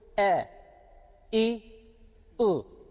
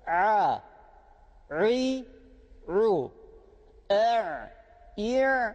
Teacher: elifi okuyorum e i u yani hiç boğazımı sıkmıyorum normal bir şekilde çıkartıyorum ama ayını okurken boğazdan çıkıyor